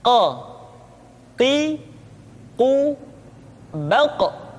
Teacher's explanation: Huruf Qaf diucapkan dengan cara menyentuhkan pangkal lidah kita dengan langit-langit bagian belakang.